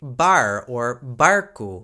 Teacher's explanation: that air sound is a little bit harder than the English herb because the tongue is raised just a little bit further when you're saying it